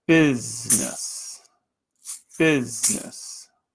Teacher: the first syllable business notice I'm lengthening that first syllable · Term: primary stress